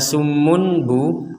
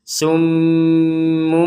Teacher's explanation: huruf bnya dibaca seperti mim namun dilanjutkan menjadi huruf ba lagi jadi summumbu makanya di sini ada tanda mim kecil Kalau dalam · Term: iqlab